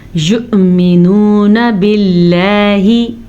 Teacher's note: یؤمنون باللہ, یؤمنون واو پہ حمزہ آ گیا, حمزہ کے اوپر ساکن ہے تو جھٹکا ہوگا. یؤمنون باللہ, لفظ اللہ کو باریک پڑھیں گے, لفظ اللہ سے پیچھے زیر کی وجہ سے.